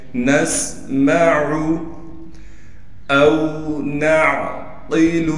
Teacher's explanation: نسمع، نون کو سین سے ملائیں گے اس لیے کہ سین ساکن ہے، میم کو صاف کر کے پڑھنا ہے، میم کو بالکل نہیں کھینچنا، اور اس بات کا لازمی خیال کرنا ہے آخر میں عین ہے، عین پر پیش ہے، اکثر لوگ اس کو کھینچ دیتے ہیں، اس کو بالکل نہیں کھینچنا